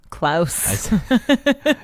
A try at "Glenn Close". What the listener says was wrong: It's Glenn Close. It's not even spelled like Klaus or anything. It's spelled like the word close.